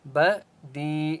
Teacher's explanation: بدی یا مدہ ہے، دال کو ایک الف کی مقدار کھینچ کر پڑھیں گے.